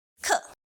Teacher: the fourth tone k is the second fall of the sound you start high and then apply a sudden drop